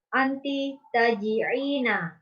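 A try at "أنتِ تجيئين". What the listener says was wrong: Bukan ain. Memang dikit ya sama ain. Tipis banget. Kalau pakai ain, tahu nggak artinya apa? Yaji'u. Pakai ain.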